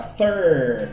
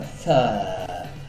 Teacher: Então, no lugar de ficar fur com a língua apontando para cima, fica fur com a língua relaxada, espalhada na parte de baixo da boca